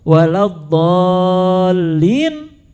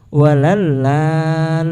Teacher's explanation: Do diganti menjadi lam. Itu kesalahan yang fatal.